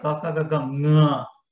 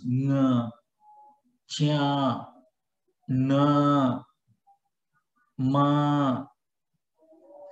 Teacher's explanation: this nga coming from the throat as well as the nose